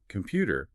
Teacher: computer with the stress on the second syllable and important also stressed on the second syllable